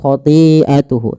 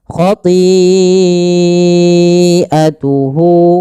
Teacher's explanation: Maka panjangnya kita panjangkan empat harakat dan tidak boleh dikurangi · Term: mad wajib muttasil